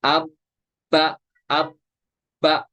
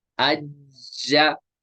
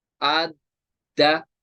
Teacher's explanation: अब जमाव के साथ पढ़ेंगे तो बा पे थोड़ा एम्फिसिस करेंगे, हम करेंगे अब बा, अब बा, उस पर जोर देंगे थोड़ा, इस तरह इब बा, इस तरह उब बा, इस तरह जीम पे भी अज्जा, इस तरह इज्जा, थोड़ा प्रेशर के साथ पढ़ेंगे इसको, उज्जा, इन पे प्रेशराइज करेंगे थोड़ा।